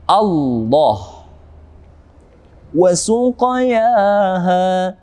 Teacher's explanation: Ada qaf yang mati berada pada tengah-tengah ayat, kita hukumi tajwid dengan qalqalah yang ringan pantulannya, yakni qalqalah sughra.